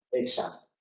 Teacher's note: KS, o se puede pronunciar GS, porque esa K está en posición implosiva